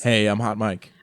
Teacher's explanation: I say with complete vocal fry and no accent.